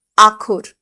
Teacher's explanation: পরিপূরক দীর্ঘিভবন বা ক্ষতিপূরক দীর্ঘিভবন হয়ে আখর, একটা খ উঠে গিয়ে আ, অটা হয়ে গেছে আ, আর খটা তো খ আছে, একখানা খ পড়ে রয়েছে, হয়েছে আখর।